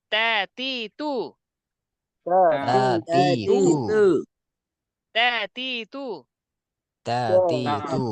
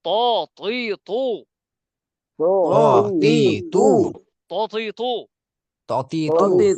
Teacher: তারপরটা তা পাতলা, ত মোটা, মাখরাজ উচ্চারণের স্থান একটাই, এখানে এটাও তাও যেখান থেকে উচ্চারণ, ত সেখানে থেকে উচ্চারণ, পার্থক্য হচ্ছে তা পাতলা আর ত মোটা